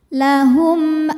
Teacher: Mim sukun menghadapi huruf hamzah selain mim dan ba maka mim dibaca jelas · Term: izhar syafawi